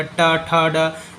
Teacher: ट वर्ग आपका मूर्धा से बोला जाएगा